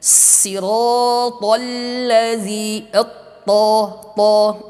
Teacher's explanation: Ta kemudian sifatnya juga syiddah, ya, syiddah, tertahan. Ta ujung lidah dengan pangkal gigi seri atas kita.